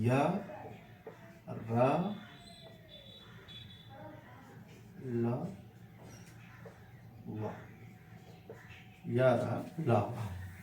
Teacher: तो इसमें क्या है, इसकी परिभाषा क्या कहें कि वो वर्ण, वो व्यंजन जिसको उच्चारित करते समय प्राण वायु अंतः से निकलती है परंतु मुख के किसी भाग को नहीं टच कर रही है, तो उसको क्या कहा जाता है, अंतस्थ व्यंजन कहा जाता है।